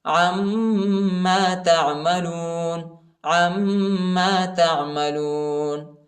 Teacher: عین کو میم کے ساتھ ملائیں گے اور غنہ کریں گے